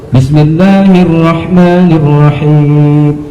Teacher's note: Jelas bunyi hak itu terasa di tengah tenggorokan atau wasatul halqi.